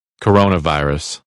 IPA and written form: kəˈroʊ.nəˌvaɪ.rəs (Coronavirus)